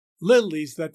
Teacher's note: That is followed by an iamb, that fest. The stress on the first syllable of the line, followed by 2 unstressed syllables together, leaves that, throws a heavier than usual stress onto the 4th syllable of the line, fest.